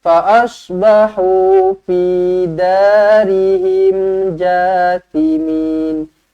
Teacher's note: sad pastikan kita baca tebal lah